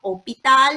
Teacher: So we don't have to give H sound.